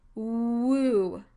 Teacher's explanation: you try to elongate the first sound in the word woo, you should get something like the oo sound